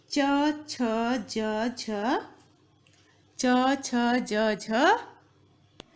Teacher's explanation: ये सब जब आप बोलते हैं च छ ज झ इया, इसको हम तालव्य कहते हैं